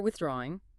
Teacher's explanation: with the stress on the draw